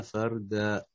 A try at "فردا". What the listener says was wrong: فاقم الراء فردا ويأتينا فردا